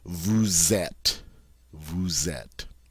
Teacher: I'm going to pronounce that S as a Z sound so that this flows and goes together so smoothly. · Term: liaison